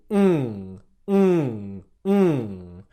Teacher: the back of the tongue touches the back of the mouth and airflow comes out your nose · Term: ng sound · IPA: /ŋ/